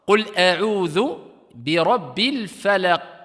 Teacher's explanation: Le qaf fait partie des huruf al-qalqala. Et ici, il y a une pause, il est en fin de ayah, donc c'est une qalqala, si on s'arrête ici, kubra, grande.